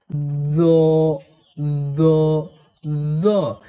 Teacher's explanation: জিহবার আগা এবং সামনের নিচের দুই দাঁতের গোড়া একসঙ্গে লাগিয়ে এই ঝা হরফকে শীষ সহ পড়তে হয়।